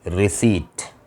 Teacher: रिसीट, ये बहुत common word है और कॉमन एरर है, बच्चे इसको रिसिप्ट पढ़ते हैं, नहीं भाई, पी साइलेंट है इसमें, ये वर्ड है रिसीट, इसमें लिप्स बिल्कुल भी नहीं मिलेंगे आपके